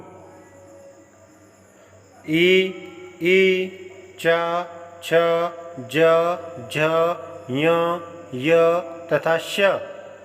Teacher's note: तालु ई, ई, च, छ, ज, झ, य, य तथा श का उच्चारण स्थान तालु है। इन वर्णों के उच्चारण में जिह्वा मुख के ऊपरी चिकने भाग तालु को स्पर्श करती है। तालु से बोले जाने के कारण इन्हें तालव्य कहा जाता है।